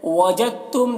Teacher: दाल ता से मिल जा रहा है, दाल ता में मुदगम हो जा रहा है, यहाँ पर इदगाम हो रहा है।